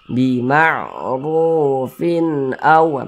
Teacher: hukumnya izhar halqi, dibaca jelas, tidak berdengung. Kita baca jelas, baca pendek saja.